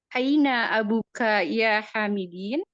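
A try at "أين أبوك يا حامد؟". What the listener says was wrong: Buka panjangkan. Di mada ya Hamidin kenapa kasroh? Kenapa kasroh? diterangkan karena ingin tahu alasannya kenapa diharokati kasroh. Bukan.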